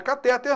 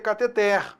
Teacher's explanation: Cuidado, não é catéter não, hein? A pronúncia correta é cateter oxítona